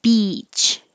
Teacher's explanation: the e vowel very high very tense